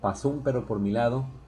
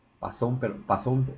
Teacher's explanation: es una especie como de diptongo Pero entre dos diferentes eh palabras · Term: sinalefa